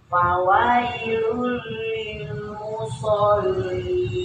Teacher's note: Iya, mad arid sukun, panjangnya lebih dari 2 ya